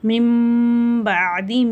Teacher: இங்கே இக்லாபுடைய சட்டம் வருது. அப்போ அந்த நூனுடைய சப்தத்தை நம்ம மீமா மாற்றி குன்னா செஞ்சு ஓதணும்.